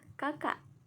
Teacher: bunyi hambat glotis tak bersuara